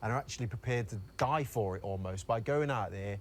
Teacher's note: accent is the dip thong air so he says he kind of elongates it and he sort of widens the mouth a little bit so it's kind of e so it's uh there okay that's